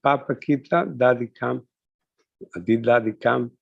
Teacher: that's a sentence with rising intonation